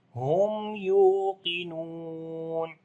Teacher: After the mim sakin, the next letter is ya. We make izhar shafawi here. Ya we long due to waw madda.